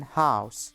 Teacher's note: Since this is an open vowel, a glide to /ʊ/ would necessitate a large movement, and the tongue often does not reach the /ʊ/ position. There is only slight lip-rounding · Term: Ow sound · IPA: /haʊs/